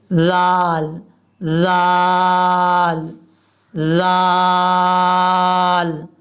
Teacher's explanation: اس کا مخرج بھی وہی ہے جو سا کا تھا. زبان کا سرا اوپر والے جو دو دانت ہیں ان کے اندرونی کنارے سے لگے گا تو زال پڑھا جائے گا · اس میں سیٹی بھی نہیں آئے گی اور اس کو سختی سے بھی نہیں پڑھیں گے. اس کا مخرج بھی وہی ہے جو سا کا تھا.